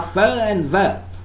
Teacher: When the lower lip is in contact with the upper teeth, the sounds produced are fa and va. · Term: labiodental sounds